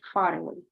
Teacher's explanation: We have the R and then we join it to the next one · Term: linking R